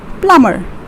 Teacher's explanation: b becomes silent over here and we call that this as plumber with two syllables